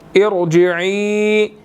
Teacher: عین کے بعد یا مدہ ہے، 1 سیکنڈ لمبا کریں گے اور چھوٹی مد بھی ہے تو 2 to 3 سیکنڈز اس کو ہم کھینچ کر پڑھیں گے، ٹھیک ہے.